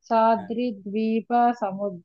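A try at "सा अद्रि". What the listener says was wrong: ఇక్కడ సాద్రి కాకుండా సా అద్రి. అద్రి. అద్రి ద్వీప సముద్ర. సా అద్రి. సాద్రి అంటే దానికి అర్థం మళ్ళా ఆ, స్ఫురించదు. కూడి అని అర్థం అండి. సా అంటే కూడి. అద్రి ద్వీప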